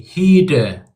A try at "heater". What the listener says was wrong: Faster on the D sound. Heater. It's like a midway point between the D and the T sound.